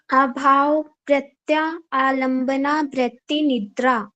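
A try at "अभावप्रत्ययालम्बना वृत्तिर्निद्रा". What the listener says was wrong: एक बार फिर से ध्यान से सुनना आभाव है प्रत्यय डबल या है ठीक है जो यहां पर आपका य है ना यह डबल है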